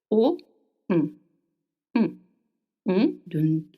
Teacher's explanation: The air goes through the nose.